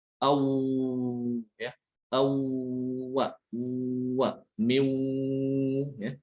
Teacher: Itu suaranya mengalir, rokhawah, huruf wawu.